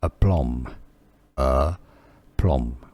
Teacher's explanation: Now in English it's generally pronounced rather as aplomb, aplomb, with a stress on that second syllable